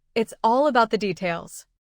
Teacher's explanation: The words all and details carry the strongest message, while the smaller words stay lighter. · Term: stress